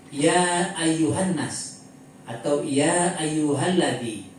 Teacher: Setelah itu dia ada alif sai dan ada bendera setelah itu maka dibaca panjang 2 setengah alif atau lima harakat. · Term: mad jaiz munfasil